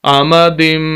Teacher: لمبا کرنا اس کو، فی، عین زبر ع، میم زبر ما، عامہ، دال 2 زیر میم دم، میم مشدد، غنہ کریں گے ناک میں آواز جائے گی۔